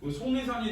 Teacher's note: 이 속리산이 있는데 이거 표준 발음으로 하면 비음화에 기역, 디귿, 비읍, 리을을 만나면 얘가 이응, 니은, 미음하고 니은이 되거든. 송리산이 되면 기역이 이응으로 바뀌어